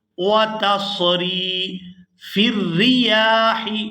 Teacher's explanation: فا کو را مشدد کے ساتھ ملائیں گے۔ فا را زیر فر، را زیر ری، فر ری، یا کھڑی زبر یا، فر ریاح۔